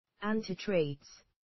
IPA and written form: ˈæntɪˌtreɪdz (antitrades)